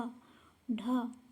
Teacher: उच्छिप्त व्यंजन वो होते हैं जिनके उच्चारण में जीभ ऊपर उठकर झटके के साथ नीचे आए